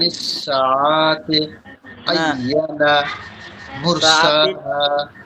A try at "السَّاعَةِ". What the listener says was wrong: টানটা আইনে হচ্ছে, সাতে হচ্ছে না, টানটা সাতে হবে। আনি সাআতি।